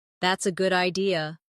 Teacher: If someone says, "That's a good idea," notice how their voice rises at the end